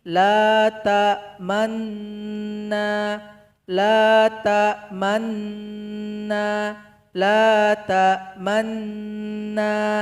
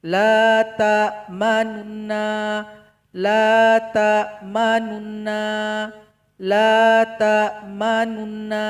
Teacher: Kalau ishmam tadi dia dibisukan dalam hati saja kita baca. Sedangkan raum ini kita tonjolkan sedikit bunyi nu-nya, tapi enggak keras sekali.